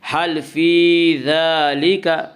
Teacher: کھڑا زبر کو 1 الف کے برابر کھینچ کر پڑھیں گے